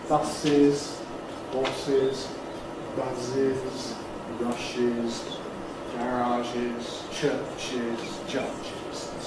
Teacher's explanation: But after sibilants, we have to add a vowel before them. So we get horses as an extra syllable. Buses, horses, buzzes, rushes, garages, churches, judges.